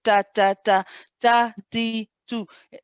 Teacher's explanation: you should actually hear a little bit of the breath running with when you're saying the ta.